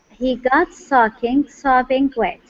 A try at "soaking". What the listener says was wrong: Okay, now instead of saying socking, okay, it's an O sound. Okay, so this is soaking, soaking.